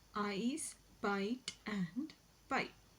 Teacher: a glide from a front open unrounded vowel to a centralized front unrounded vowel just above the half closed position